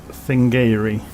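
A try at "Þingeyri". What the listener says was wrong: They don't pronounce TH as th. It's a hard T. Tiingere. If you have to pronounce the N, Tien. Tiingere or Tingeri.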